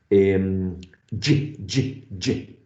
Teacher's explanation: So far, ch and j in terms of place are exactly the same, and they are produced by raising the front part of the tongue past the alveolar ridge, in between the alveolar ridge and the hard palate.